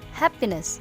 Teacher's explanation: In the word happiness, the most stressed syllable is ha, and the least stressed syllable is p. Therefore, we have to pronounce it happiness.